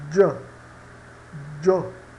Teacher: Então veja essa palavra, io, né, que significa eu, a gente pronuncia j, jo. Observe que esse D do j é quase mudo